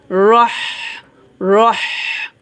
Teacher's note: আমাদের এখানে চিকন করে বাতাস বের করতে হবে গলার মাঝখান থেকে। রহ রহ। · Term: হামস